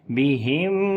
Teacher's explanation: مروا، اور را کو موٹا پڑھیں گے، اس کے اوپر پیش ہے اور لمبا بھی کریں گے، واو مدہ ہے، مروا بہم، میم ساکن کے بعد آگے یا آ گیا، اظہار شفوی ہوگا، میم کی آواز کو ظاہر کر کے پڑھیں گے